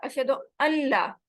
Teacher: عربی قاعدے کی وجہ سے ہم نون کو لام کے ساتھ ملا دیتے ہیں